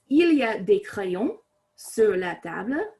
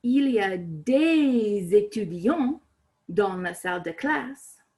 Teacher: des now gets that final S pronounced with the liaison